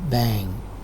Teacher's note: Be careful not to be misled by the spelling of a word like bang. It ends with ing, angma sound only, bang. Not ing, but ang. There is no g sound in this word.